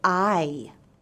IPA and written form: aɪ (eye)